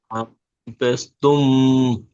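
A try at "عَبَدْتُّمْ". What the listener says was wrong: তুম গুন্না হবে না, তুম।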